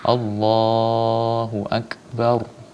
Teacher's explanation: Ro-nya dibaca tebal, jangan dibaca tipis. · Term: tafkhim